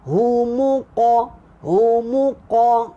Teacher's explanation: lantunan huruf qaf ni dia bunyi dia ke atas, bukan bunyi ke depan